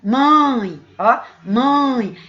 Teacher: o ditongo ele é nasal quando o som sai metade pela boca metade pelo nariz por isso nasal e oral quando o som é aberto sabe